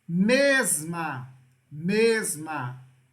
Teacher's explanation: A sílaba mais forte aqui é mes.